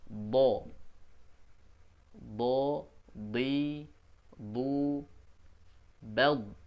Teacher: sepanjang Sisi lidah bertemu dengan gigi geraham nih bagian atasnya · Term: dari sisi lidah